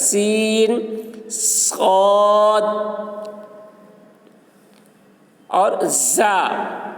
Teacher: زبان کی نوک کو اگلے اور نچلے دو دانتوں کے اوپر سے لگائیں، مخرج ایک ہے مگر آواز میں فرق ہے، یعنی زا کی آواز بلند ہوتی ہے، صاد کی آواز پر اور سین کی آواز باریک ہوتی ہے، اور سیٹی کی آواز تینوں حروف میں ہوتی ہے